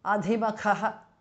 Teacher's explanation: Dha and Kha are Mahapranaha.